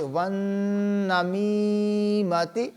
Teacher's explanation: نون مشدد ہے، نون کے اوپر غنہ بھی کریں گے اور میم کے بعد یا مدہ ہے، میم کو کھینچیں گے۔